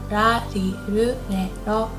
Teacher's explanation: Pay attention here that the R sound is not as harsh as in English, so it's not like R, not like R, but it's very soft in between L and R, so like ra, ri, ru, re, ro.